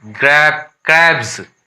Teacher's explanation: तो यहाँ देखिए फॉर एग्जाम्पल में है, यहाँ हम ज पढ़ेंगे, इसको वॉइस्ड हो गया, जैसे कि CRAB वॉइस्ड है, B ब वॉइस्ड साउंड है, इसमें S जुट गया है